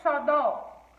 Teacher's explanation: tem a sua última sílaba mais forte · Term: oxítona